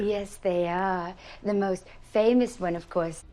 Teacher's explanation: There's incredible care with some of the details here. Listen to the tiny little sort of catch breath right after the word most